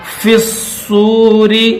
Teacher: یوم ينفخ، یہاں جو نون ساکن ہے اس نون کے اوپر بھی غنہ کریں گے، خوا کو موٹا کریں گے۔ فی الصور، فا کو ڈائریکٹ صاد کے ساتھ ملا دیں گے